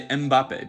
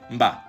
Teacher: This is because in Cameroon, where Mbappe's family's from, there's a lot of Bantu languages, and they have these things called pre-nasalized consonants. So the M in that word doesn't carry any syllabic weight, and it's basically just part of the B, like mba.